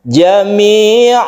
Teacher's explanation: maka kita berhentinya itu sebagai mad iwad. Kita panjangkan satu alif